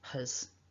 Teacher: So my recommendation would be to try and pronounce this word with the h. So you're letting a little bit of air puff out of the mouth